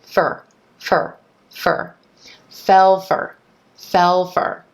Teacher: then the word for is reducing to fer